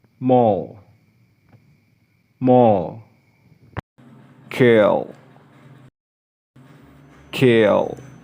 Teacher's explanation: allowing the airstream to escape through the sides of the tongue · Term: Lateral sound